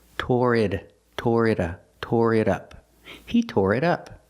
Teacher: We hear the T in it sound like a fast D.